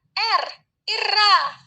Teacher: Itu cara artikulasinya trill atau getaran. Lalu tempat artikulasinya di alveolar.